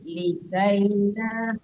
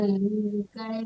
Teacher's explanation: Linya dipanjangkan likaila, jangan likai.